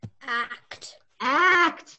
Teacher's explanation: they make separate sounds but they go next to each other there's no vowel in between them which is kind of weird but you say then do you